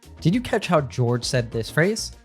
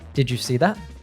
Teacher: When we have a D followed by a Y sound, we often morph them into a J sound. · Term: connected speech